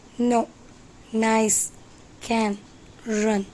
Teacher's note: It is from teeth. It is voiced alveolar nasal sound.